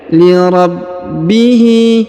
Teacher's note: huruf ba berharakat tasdid maka kita tahan dan kita tekan